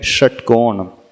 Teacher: जीभ को और ट्विस्ट कर लो षटकोण के श में, उसमें एक सीटी की सी आवाज आ गई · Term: मूर्धन्य श